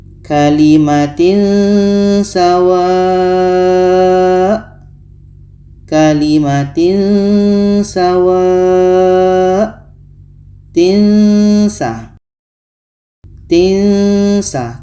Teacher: ini ikhfa hakiki, kita baca secara samar dan dengung.